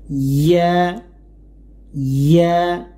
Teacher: জিহ্বার মধ্যখান উপরে তালুর সাথে লাগাতে হবে